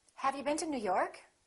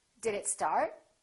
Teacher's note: for yes/no questions we use a rising intonation